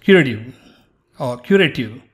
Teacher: sometimes the t is not pronounced as t it's somewhere between d like david and t like tom